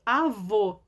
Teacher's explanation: A segunda aqui está com acento circunflexo. O som dele é fechado, ó. Avô.